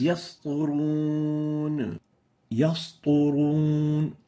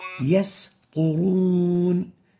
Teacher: And the reason for that is having the ta. The ta is a velarized letter, and the speaker would subconsciously tend to also velarize the letter preceding it, the sin. And in that, it would result in yasturun. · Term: velarizing the sin